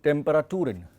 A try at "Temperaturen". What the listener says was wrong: Not Turin, but Temperaturen. So the umlaut is coming while you are reading it, the umlaut is coming where it is not there and it's not coming where it is there.